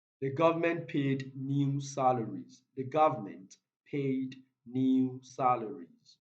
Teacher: the stressed world here is new